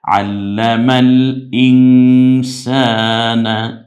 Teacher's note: জবর এর পরে খালি আলিফ এক আলিফ টেনে বলতে হবে